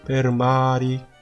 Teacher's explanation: 저기 per 할 때는 모음이 없기 때문에 R이 굴려야 되고요. 마리의 R은 R이 모음 사이에 있기 때문에 굴리질 않으셔야 되죠.